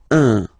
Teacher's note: So it's what we call the nasal, so it goes in your nose, okay? So if you listen to me, you don't hear any N, okay? So it's just a combination of the two.